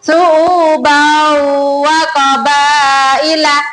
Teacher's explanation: Itu tanwin bertemu dengan huruf wow, ya anak-anak dibaca mendengung